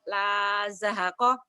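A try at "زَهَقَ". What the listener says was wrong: La zahaqa bener.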